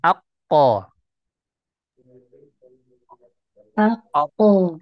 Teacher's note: Kalau untuk huruf qaf, pangkal lidahnya terangkat ke langit-langit atas yang keras dan yang lunak. Ya, jadi aqsal lisan ma'a al-hana al-a'la al-lahm.